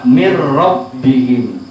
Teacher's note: Karena nun mati diikuti oleh salah satu huruf idgham bila gunnah, yaitu ro.